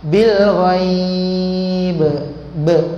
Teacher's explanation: Bila berhenti ada lantunan qalqalah.